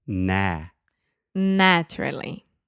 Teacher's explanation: your mouth is very open and your tongue is pushed towards the front of your mouth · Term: the a sound